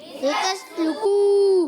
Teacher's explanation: واو مدہ بھی ہے، اور کاف پر بھی پیش ہے، واو بھی آ رہا ہے، ہونٹ پھر گول ہو جائیں گے۔